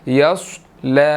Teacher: लाम के ऊपर खड़ी ज़बर है, यस ल, 1 सेकंड इसको लंबा करेंगे जी